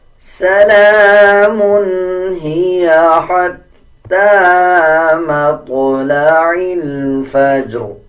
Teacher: تا کے اوپر کھڑا زبر ہے 1 سیکنڈ لمبا کریں گے. تا کے بعد جو یا ہے اس کو سکپ کر دیا جائے گا. اسی طرح آگے دیکھیں طوا کے اوپر جزم ہے.